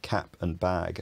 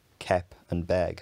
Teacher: the trap vowel is sometimes e before velars like k and g and after k. So cap and bag are pronounced kep and beg for some speakers.